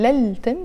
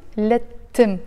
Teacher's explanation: I'm pronouncing it lettim, but we write it lel-tim, but because tim starts with the letter t, which is a sun letter, so we don't pronounce the il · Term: shadda